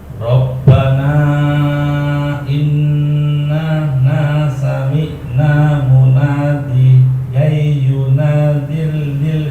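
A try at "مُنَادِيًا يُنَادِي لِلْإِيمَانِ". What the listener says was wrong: panjangkan yunadi baca dari munadi ay munadiyai panjangkan yunadi lil munadiyai yunadi bukan tiyi tapi dia itu panjang yunadi lil dari situ panjangkan di panjang yunadi lil imani munadiyai yunadi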